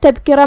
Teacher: کلمت تذکرہ میں یہاں حرف الدال ہے، دال کو ہم زبان کے سر اور اوپر والے دانتوں کے اندرونی کناروں سے ادا کریں گے